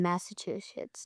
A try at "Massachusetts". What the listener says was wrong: That's Massachusetts. Yeah, there's not a CHEW, Massachusetts, in there.